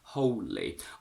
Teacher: I personally prefer a geminated L